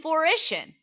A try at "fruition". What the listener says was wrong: There's no L. It sounded like you did. Fruition. Fruition. It's FRU. Fruition.